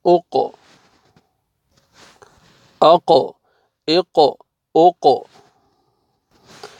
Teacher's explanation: حروف قلقلہ میں سے قاف آ رہا ہے، تو ڈبل ساؤنڈ آئے گا۔ حمزہ فتحہ، قاف سکون، اق۔